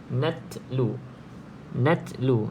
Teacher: dia ada sifat Hamas jadi kena ada sedikit angin yang keluar